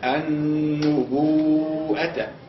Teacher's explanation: الالف اللي هو حرف المد والهمزه اجتمع في نفس الكلمه قال لابد هنا في المد المتصل ان نزيد على مقدار المد الطبيعي